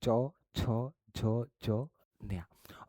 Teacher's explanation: બોલતી વખતે જીભ તાળવે ચોટે છે એટલે કે તાલુ આને બોલાય તાલુ વ્યંજન ચ છ ચ્યા ઓકે · આ જે વ્યંજન છે એ બોલતી વખતે જીભ તાળવે ચોટે છે, મતલબ કે તાલુ.